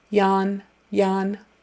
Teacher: to be ywn ywn just straight up and down ywn and your tongue comes forward for the in at the end ywn Yan make sure your tongue doesn't hit anything else on